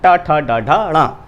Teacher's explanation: ट ठ ड ढ ण इनका उच्चारण जो है वो मूर्धा नामक स्थान से होता है, तालु से पीछे का जो स्थान है उसे मूर्धा कहा जाता है।